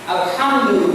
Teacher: It is simply hat. Alhamdu, with that ha, it is pronounced with expulsion of air